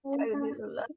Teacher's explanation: Fayudillullah alif lam jalalah dibaca tafkhim karena sebelumnya domah.